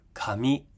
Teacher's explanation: so starts lower, comes high. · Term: final high pitch accent